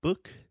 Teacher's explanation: It's a very deep sound in the back of your throat. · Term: the other U sound